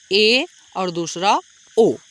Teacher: ऐसे स्वर होते हैं जिनके उच्चारण करते समय आपका जो मुख होता है वो हल्का सा ज्यादा खुलेगा